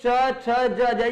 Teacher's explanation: तो जो वायु है बड़ी घर्षण के साथ निकलती है। · च छ ये जिह्वा और तालु के स्पर्श से बोले जाते हैं। वायु जो है यहां भी घर्षण के साथ निकलती है। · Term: स्पर्श संघर्षी